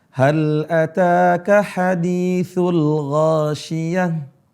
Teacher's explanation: Kemudian kita waqaf itu berubah suaranya menjadi ha. Seharusnya ghasyiyat, tapi karena dia itu tak marbutah berubah huruf ta itu jadi ha.